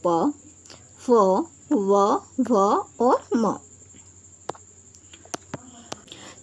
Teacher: प वर्ग को ओष्ठ यानी कि होठों की सहायता से बोला जाता है